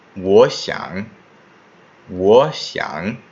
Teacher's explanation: You just need to dip on the second syllable. The first syllable is actually going to turn into a rising tone.